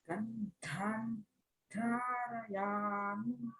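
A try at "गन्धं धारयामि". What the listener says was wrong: Make a little bit longer on your dhan. Gandhan dharayami. Gandhan dharayami. Yes, hold on to that.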